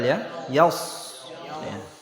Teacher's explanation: Suara tebalnya bukan dari bibir, ingat, tetapi dari lidah. Ya, pangkal lidah yang diangkat, suaranya menggema di mulut. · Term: shad tebal